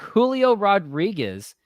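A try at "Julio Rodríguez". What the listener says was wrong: Did you just overpronounce the Julio? Julio. A little.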